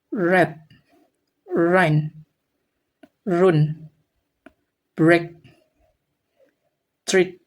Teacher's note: The sound should be smooth and continuous. And then the sound should come out softly almost like a glide not like a roll or a strong tap